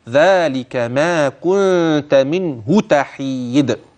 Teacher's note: ان النون الساكنه معي واضحه بينه لوجود الهاء بعدها ولاحظ معي هاء منه تحيد عند وصلها انها مضمومه فقط فليس فيها صله ولاحظ معي قلقله الدال في كلمه تحيد هكذا ذلك ما كنت